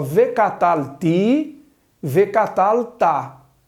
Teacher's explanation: Então a primeira pessoa que é comum, a segunda masculino singular, ao invés de paroxítonas, como no catal, no vecatal elas são oxítonas, acento na última sílaba